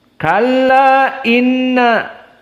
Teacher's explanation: Kalla Inna majaiz munfasil dibaca dalam keadaan alqasr Kalla Inna tidak dibaca panjang ada un jumhur dibaca tawassut empat jadi Kalla Inna dan adapun